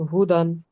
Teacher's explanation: দালের উপর দো জবর তানবিন এসছে, তানবিন আর নুন সাকিনের আওয়াজ একই রকম